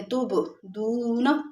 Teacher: وَأَعْلَمُ مَا تُبْدُونَ، تب میں با ہے، جب با ساکن ہوگا تو وہاں پر کلکلا ہوتا ہے